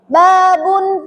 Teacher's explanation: Ba itu makhraj hurufnya itu ada di bibir yang mana bibir itu menutup rapat atau yang dinamakan asyafatani.